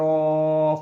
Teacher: 'ra' mempunyai fathah tanwin, mempunyai tanda alif, panjangkan, (ee) mad iwadh.